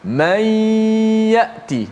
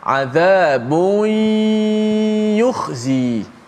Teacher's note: Ya, tengah lidah kita akan terkacip sedikit, kan? So, nun masuk dalam ya di mulut, itu idgham. Ma'al gunnah masuk di hidung. Maksud dia serentak bermula di mulut dan juga berlaku di hidung.